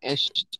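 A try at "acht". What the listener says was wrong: আক্ট। এস্ট না, এস্ট হলে এ থাকতো, এটা হলো আ, এক, আক্ট।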